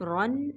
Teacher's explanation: را کے اوپر دو زبر ہے تو را موٹی ہے